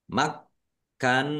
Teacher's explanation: Kafnya dibaca dobel ada tasdidnya. Maknahum nun tasdid dibaca ghunah atau mendengung ditahan biar tampak mendengungnya. Nun fathah berdiri mad thobi'i panjang dua harakat.